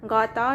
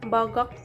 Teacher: Konsonan hambat velar bersuara G dilafalkan sama dengan konsonan K, tetapi di sini pita suara turut bergetar, seperti pada kata gata yang seharusnya gatal dan bagak yang seharusnya berani.